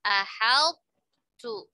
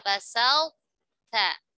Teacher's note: huruf to saat bertemu huruf ta seperti pada kata ahal tu atau kata basal ta, maka keduanya diidghamkan serta sifat itbaqnya disisakan